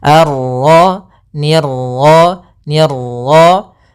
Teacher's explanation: Untuk pantulan dalam huruf ra itu cukup sekali saja, karena sifat ra ada sifat takrir, yaitu pengulangan, tapi hanya sekali.